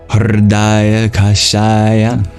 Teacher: So curl your tongue back and then voice. That's called a vocalic liquid.